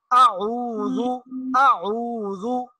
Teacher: یہ دو حرف حمزہ اور عین یہ ایک ساتھ آئے ہیں اور ان دونوں کا مخرج بالکل قریب قریب ہے